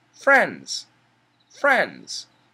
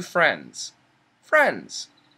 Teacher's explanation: what happens in the word friends we have an N DS the n and the S are strong sounds and the D is a weak sound so we can cancel the D